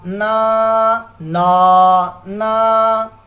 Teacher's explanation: جب اس کو ادا کرنا سٹارٹ کرتے ہیں اس وقت اس کی آواز ناک میں جاتی ہے، اس کے بعد جو ہے وہ ناک سے آواز نہیں آنی چاہیے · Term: غنہ